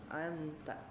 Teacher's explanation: huruf nun ketika disukunkan maka dia punya sifat apa, khoisyum ya, masuk ke hidung tapi tidak dipantulkan gitu ya, tapi tawasud ya, anta gitu ya.